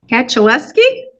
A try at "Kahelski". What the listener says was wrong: Kahelski. Kahelski. The C is silent.